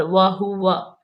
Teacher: یہ دونوں واو جو ہونٹوں کو گول کر کے ادا کریں گے